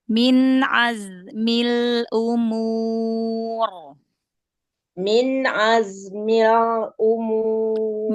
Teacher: Lam sukunnya ditekan suaranya ke bawah biar inhirabnya ee keluar dari samping kanan kiri suaranya. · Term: inhirofnya